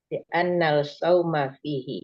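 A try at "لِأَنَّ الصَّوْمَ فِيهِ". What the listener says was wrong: Li'annal. Iya, itu makanya saya dengar li'annal, Ibu. Li'annas sauma fihi. Jadi ingat kalau ada anna, apa beda anna?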